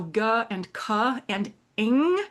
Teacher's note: So G and C and ing this NG sound are a voiced and a voiceless and a nasal velar stop